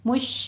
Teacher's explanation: مش میں شین پر تفشی ہوگی، آگے را باریک پڑھی جائے گی